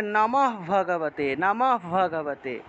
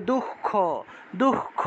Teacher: এই যে হসন্তযুক্ত হ উচ্চারণ করতেছি, এই হয়ের পরেই সাথে সাথে পরের অক্ষরটাকে ধরতে হয়।